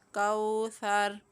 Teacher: یہاں پر وقف کرتے ہوئے را کو ساکن کر دیں گے اور را کو پور پڑھیں گے